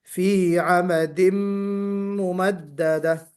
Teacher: اور پھر اس کے بعد فی عمد ممددہ میں تھوڑا سا غنہ ہمیں اور وقت لگانا ہے، غنے میں 2 حرکت برابر اس میں مقدار پوری کرنا ہے